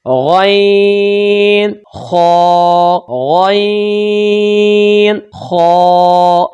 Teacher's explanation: یہ 2 حروف حلق کے اوپر والے حصہ سے، جو کہ منہ کی طرف حصہ ہوتا ہے، وہاں سے اس کو ادا کرتے ہیں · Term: ادنا حلق